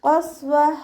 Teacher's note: ഖാഫ് ഇസ്തിഅലാൻ്റെ ലെറ്ററാണ്. തഫീം ചെയ്യുക.